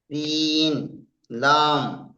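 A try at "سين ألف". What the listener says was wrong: লাম নয়, সিন আলিফ, সিন আলিফ।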